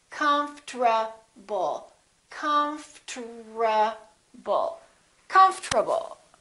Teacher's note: to do it we don't say confortable this is what happens the o disappears but then there's one more very strange thing that happens and that's the rt becomes a tr they change positions